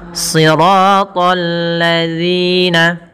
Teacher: Kemudian bertemu dengan alif lam. Di sini ada alif lam syamsiyah pada lafal alladzina, yang dimana lamnya harus tipis karena sifat lam itu tipis.